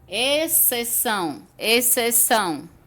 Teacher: Quando eu falo exceção, você não sente o som do X. O X fica mudo, mas ele tá ali. A palavra se escreve com um X e um C. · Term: dígrafo